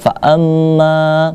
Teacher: Di situ kalau kita lihat banyak terdapat mat tabi'i, ya. Mat tabi'i situ seperti kita lihat fa amma, ma-nya panjang.